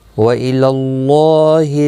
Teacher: اللہ کا لام زبر کی وجہ سے پر پڑا جائے گا، اس کے اوپر کھڑی زبر بھی ہے، ایک الف کی مقدار کے برابر کھینچ کر پڑا جائے گا۔